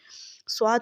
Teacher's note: जबान की नोक सामने वाले नीचे के दांतों के किनारों से मजबूती से लगेगी और जबान का जो पिछला हिस्सा है यह तालों की तरफ बुलंद होगा मोटा पड़ी जाएगी ये ठीक है स्वाद मोटा भी पढ़ा जाएगा